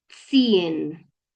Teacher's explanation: como tengo la Z, la voy a pronunciar como si fuera una TS